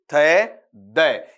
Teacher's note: आपका जीभ है ऊपर वाले दांतों को हल्का सा क्या करेगी, स्पर्श करेगी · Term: डेंटल साउंड